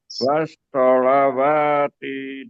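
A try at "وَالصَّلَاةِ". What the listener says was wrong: Wassolati. Wawunya nggak dibaca. Wawunya nggak dibaca. Itu lamnya dipanjangin. Wassolati.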